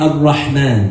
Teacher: The ha, which is a letter that comes from the middle of the throat.